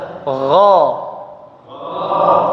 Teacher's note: Dari sisi udara dia jahar ya, jadi tidak ada udara yang mengalir deras ya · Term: huruf gha